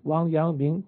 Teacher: Wang Yangming, which is all second tones